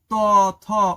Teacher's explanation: দেখো তোমার জীভের ডগাটা দাঁতের সাথে কিছুটা স্পর্শ হচ্ছে। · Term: দন্ত ব্যঞ্জন